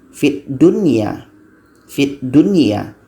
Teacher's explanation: Jadi tidak ada dengungan dibaca wajib jelas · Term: idzhar wajib